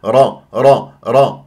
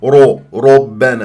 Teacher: الراء مفخمه اللي مفتوحه تقرع